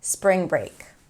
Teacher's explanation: And actually, when you think of connected speech in English, where all the words within a phrase are connected, feels like we're adding a lot more consonants together, right? Spring break, because the NG of spring connects to the BR of break